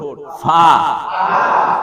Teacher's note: ফা উপরের দাঁত, নিচের ঠোঁট, ফা